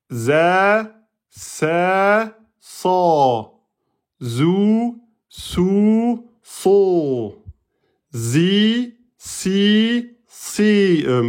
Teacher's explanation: Alors pareil l'extrémité de la langue, on est sur l'extrémité de la langue avec la base de la face interne des incisives inférieures · Le son de ces lettres passant entre les incisives supérieures et inférieurs. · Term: le zeil, le sin et le sad